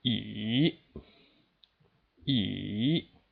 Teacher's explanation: The third tone will start a little bit lower and end up at 4. So starting from 2, then to 1, then to 4. Sounds like this.